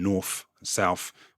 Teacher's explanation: New Yorkers tend to pronounce all words that end in th with a kind of f sound.